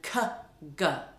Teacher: the velar plosives that are made at the back of the mouth